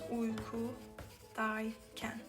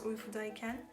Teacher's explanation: There are two vowels, so I use y in between, and this e disappears. So it becomes uykudayken. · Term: Buffer letter